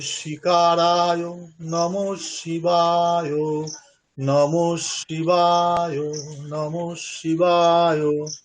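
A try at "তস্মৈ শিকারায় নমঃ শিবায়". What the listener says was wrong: হয়েছে, মানে সুরটা আরো ঠিক করতে হবে, মানে ভালো করে সুরগুলো ভালো করে অভ্যাস করতে হবে, বারবার শুনে বারবার অভ্যাস করতে হবে।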